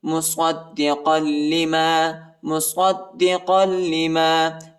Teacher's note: صاد کو دال کے ساتھ ملائیں گے اور دال کو شدت کے ساتھ، سختی کے ساتھ پڑھیں گے، قاف کو لام کے ساتھ ملائیں گے.